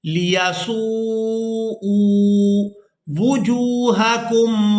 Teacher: حمزہ کو کھینچ کر ادا کریں گے الٹا پیش کی وجہ سے